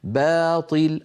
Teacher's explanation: ترقيق الباء وتفخيم الراء باطل ايضا لا يصح ان نقول باطل لا يصح تفخيم الباء بسبب مجاورتها للطاء وان حال بينهما الف